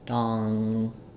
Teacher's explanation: donkey has the ong, so it's like an aw vowel